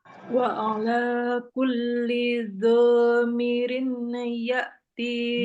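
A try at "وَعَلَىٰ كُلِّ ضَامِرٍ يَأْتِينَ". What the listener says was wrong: Dhamiri. Dhamiri. Miriyatina. Nah, jadi suara tanwinnya nggak kedengaran lagi. Miriyatina. Tashdid.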